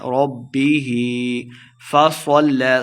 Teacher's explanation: ہا کے نیچے کھڑی زیر ہے تو ہم نے اس کو دو حرکات لمع کرنا ہے